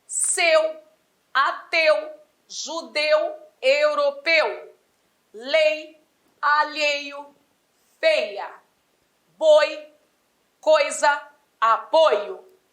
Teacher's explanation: o timbre agora é fechado não mais aberto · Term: ditongos fechados